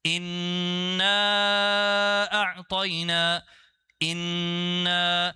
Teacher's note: the first word is supposed to be stretched 2 counts